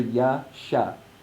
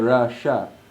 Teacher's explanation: the palatal S with the line on top is pronounced with a higher pitch than the one with the dot underneath